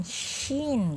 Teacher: Shin itu tengah lidah ke langit-langit, ada angin, shin gitu ya, merasa ada angin yang tersebar di dalam mulut. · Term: at-tafasyi